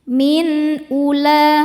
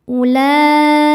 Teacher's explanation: Nah ini wawunya bukan pemanjang ya, nggak usah dibaca. Walaupun ada hamzah berbaris dhammah sebelumnya, ini tetap pendek, wawunya abaikan.